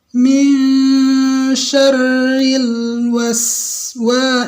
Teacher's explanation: Jadi lebih panjang sin saya daripada lam yang saya baca.